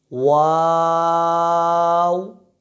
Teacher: پہلا واو وہ ہم نے لمبا کرنا ہے، یعنی وا، اور جو آخر میں واو لکھا ہوا ہے اس کو لمبا نہیں کریں گے بلکہ ہونٹوں کو گول کر کے اپنی آواز کو ختم کر دیں گے